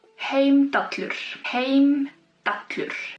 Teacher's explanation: But it's actually, if you have two L's, it's pronounced TL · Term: double L